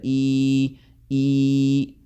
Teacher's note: زبان کا نیچرلی زبان کا درمیانہ حصہ اوپر کی طرف جاتا ہے، ای۔ اور یہ اسی طریقے سے صحیح جو ہے وہ یا مد کی آواز نکلتی ہے۔